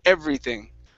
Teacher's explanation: instead of an F okay you don't want to say everything it's everything with the th with your tongue between your teeth